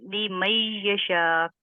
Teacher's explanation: ادغام جو ہے اس کا مطلب ہوتا ہے مدغم کرنا، ملا دینا، مکس کر دینا، ٹھیک ہے۔ اب یہاں نون ہم نے نہیں پڑھا، حالانکہ نون جو ہے یہاں موجود ہے لیکن اس کو ہم نے نہیں پڑھا، اور میم اور یا کو ہم نے ملا دیا، ایک دوسرے میں مکس کر دیا، لیمیشا، ٹھیک ہے۔